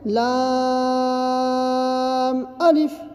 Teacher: لام کے اندر جو ہے مد لازم ہے، جس کی وجہ سے ہم کھینچ کے پڑھتے ہیں، اور الف کے اندر نہیں ہے۔